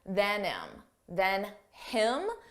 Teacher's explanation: Notice how you don't hear the H on him